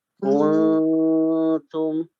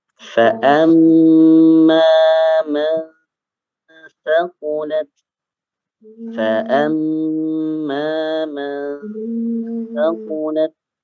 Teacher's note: Nun sukun dan tanwinnya dibaca samar. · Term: ikhfa